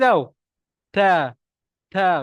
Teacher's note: makhrajnya adalah hujung lidah di antara gusi dan gigi atas maknanya kita kena sebut ta lidah tu Mesti kena gigi tah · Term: huruf telefon